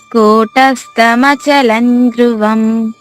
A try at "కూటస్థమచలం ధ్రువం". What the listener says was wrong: ధ్రువం, అక్కడ ఒత్తుధ ఉంది కదమ్మా, ధ్రువం. ఇక్కడ 2 మహాప్రాణాలు ఉన్నాయి. కూటస్థ, ఇక్కడ సాకి తావత్తుగా ఉంది, అక్కడ ఒత్తుథ అది. అలాగే ధ్రు, అక్కడ కూడా ఒత్తుథ. కూటస్థమచలం ధ్రువం. అంటే మీకు చదువుకునే వాళ్ళకి అక్షరాలు ఇక్కడ మహాప్రాణాలు బాగా చెప్పగలిగితే మీకు ఏదైనా అవలేలుగా పాడగలుగుతారు.